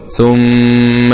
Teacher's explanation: الميم فيها غنة مقدار حركتين